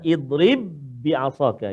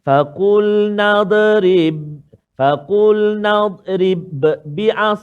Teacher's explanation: Maka contohnya dalam halaman yang ke-9 ni yang kita baca tadi, iaitulah idrib bi'asaka. Maksudnya huruf ba yang pertama tak berbunyi. Dia terus masuk ke dalam ba yang kedua. Jangan kita baca faqul nadrib bi'as. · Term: idgham mutamathilain